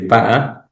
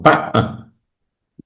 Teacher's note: Boca larga, saltillo ya. Hay una oclusión.